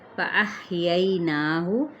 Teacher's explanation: ہا باریک ہے اور ہمس بھی کریں